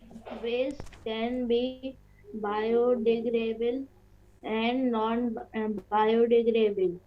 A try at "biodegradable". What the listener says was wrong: Okay, beta, it is degradable. Dable is there. See, D-A-B-L-E. Like table, we have dable. Degradable.